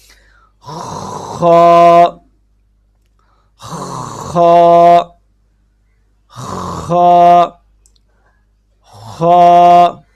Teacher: خا کا جو مخرج ہے وہ ہے گلے کا سب سے اوپر والا حصہ · خا کا مخرج ہے حلق کا منہ کی طرف والا حصہ، یا پھر آپ آسان الفاظ میں اس طریقہ سے بھی یاد کر سکتے ہیں کہ گلے کا سب سے اوپر والا حصہ، یہاں سے پہلے تھوڑا سا محسوس کریں کہ آواز کہاں سے نکلے گی۔